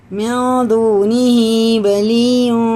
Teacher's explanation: ادغام واو ہے، واو ساکن سے پہلے وہ تنوین ہے تو غنہ کر کے پڑھیں گے · نون ساکن کے بعد دال آ رہا، یہ اخفا میں سے یہ اخفا اور غنہ دونوں ہی ہوئیں گے